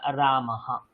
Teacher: প্রথমেই জেনে রাখবেন এই যে রামা শব্দটা আমি এখানে দেখতে পাচ্ছেন না আপনারা রামাহা কিছুই না আপনি এই বিসর্গটাকে ভেঙ্গে একটা হ করে দিন তাহলেই কাজ শেষ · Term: বিসর্গের উচ্চারণ